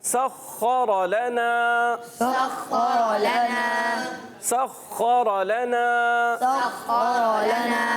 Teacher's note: یہاں سین کی ادائیگی اور خا پر زبر بھی ہے اور خا کو موٹا بھی رکھنا ہے، را کو ہی موٹا کرنا ہے۔